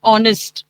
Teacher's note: Though the word starts with H, we are saying the sound of O